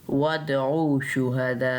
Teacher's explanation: دال پہ کلکلا کرنا ہے، میم کو میم سے ملاتے ہوئے غنہ کرنا ہے